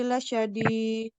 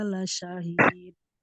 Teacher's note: yang ada huruf dal di akhir, kalau kita berhenti maka dibaca dengan qalqalah, ya, dengan pantulan